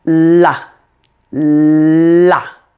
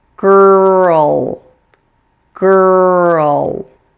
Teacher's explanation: when you pronounce an L that comes after vowels you need to raise the back of your tongue also